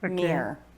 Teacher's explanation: a lot of americans would pronounce it almost in one syllable